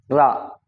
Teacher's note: रा रा बोलेंगे तो जीभ ऐसी हो जाती है, ऐंठ जाती है, तो इसलिए इसको बोलते हैं लुंठित।